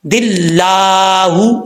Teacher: جب دال کو اللہ کے لام سے ملائیں گے تو بیچ میں الف اور لام جو ہے وہ گر جائے گا، جس لام کے اوپر شد ہے اس کے ساتھ ملائیں گے.